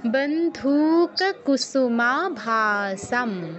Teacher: অনুস্বরের জায়গায় ম উচ্চারণ হবে, ময় হসন্ত, কারণ পরে যেহেতু যেই শব্দটি আছে তার প্রথম অক্ষর প, যেটি প বর্গীয়, এবং প বর্গের অনুনাসিক বর্ণ কি?